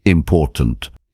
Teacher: in the word important, the stress falls on the second syllable, important.